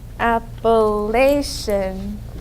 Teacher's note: There are 4 syllables and the third syllable gets the accent.